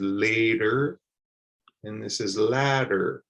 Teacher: the T sound sounds like a D in both of them